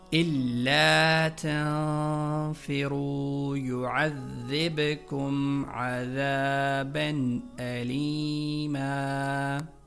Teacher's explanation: لام مشدد اور ذال پر زبر موجود ہیں اور ان کے فوراً بعد الف موجود ہے، لہٰذا ان دونوں کو کھینچ کر پڑھنا ہے، اور اس کے بعد را پر پیش اور پیش کے بعد واو، لہٰذا یہاں بھی 1 الف کی مقدار کے بقدر لمبا کرنا ہے، اور آخر میں لام کے نیچے زیر اور زیر کے بعد یا موجود ہے، یا ساکنہ، لہٰذا وہاں بھی کھینچ کر پڑھنا ہے۔